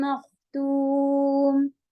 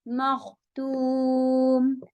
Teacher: توم کو ہیوی نہیں کیجیے گا، خا ہیوی